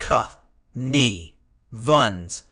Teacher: connivance is a noun it is pronounced c n vun with the stress on the second syllable